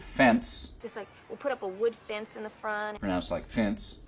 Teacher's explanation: so you can hear a pin pen merger pronouncing pin and pin about the same in the word fence